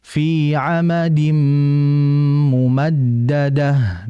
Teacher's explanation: Maka ini masuk kategori idgham bih yaitu memasukkan huruf kedua disertai dengan ghunah · memasukkan huruf kedua disertai dengan ghunnah sehingga dibaca fi amadim mumaddadah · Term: idgham bi ghunnah